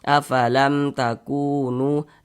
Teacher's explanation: Ini masing-masing dibaca 2 harokat. Ku dibaca 2 harokat, nu dibaca 2 harokat panjangnya. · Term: mad tabi'i